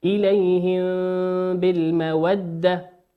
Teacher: وقوله سبحانه وتعالى إليهم بالمودة الميم ساكنة في كلمة إليهم أتى بعد حرف الباء والباء من حروف الإخفاء